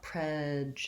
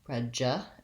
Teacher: prejudice has first syllable stress, and it has the red tent vowel, sounds like eh